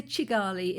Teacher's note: people from the north of Rwanda have a slight Ugandan accent and pronounce it Chigali. But the majority say Kigali. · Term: ch sound